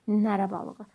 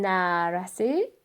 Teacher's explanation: Nərə balığı deyəndə uzanmır nərə balığı. Amma Koroğlunun nərəsi onda uzanır.